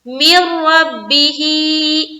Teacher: नून साकिन और नून साकिन के बाद रा, यहाँ पर हम इदगाम कर रहे हैं यानी कि मिला रहे हैं